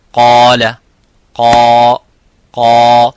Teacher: so the alif is mufakham, it is a heavy because of the qaf. So whenever the letter is heavy, you make the letter alif qaf, the letter alif of mad, heavy.